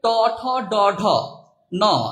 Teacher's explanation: এই বর্ণগুলো বা ধ্বনিগুলো উচ্চারণ করার সময় আমরা কিন্তু দাঁতের যে গোড়া আর তালুর মাঝামাঝিতে একটা ধাক্কা লাগে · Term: মূর্ধন্য ব্যঞ্জন